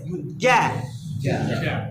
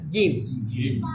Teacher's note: জিম উচ্চারণ হওয়া জিহ্বার মাঝখান এই জায়গা থেকে উপরের তালের সাথে লাগবে